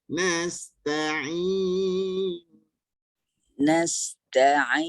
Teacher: Ain baris bawah memang dah nipis dah. Tetapi dibantu dengan lidah baru sempurna nipis dia. Rendahkan lidah.